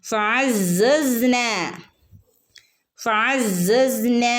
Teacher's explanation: നന്റെ കൂടെ അലിഫ് മദ് വന്നിട്ടുണ്ട് രണ്ടനക്കം നീട്ടുക